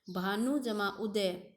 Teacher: देखो छोटा ऊ, दोनों छोटे ऊ मिलकर बड़ा हो गया